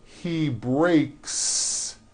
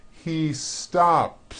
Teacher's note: the S you add also remains unvoiced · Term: unvoiced s